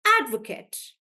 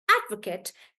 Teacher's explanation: when he's using it as a noun I would stress on the first part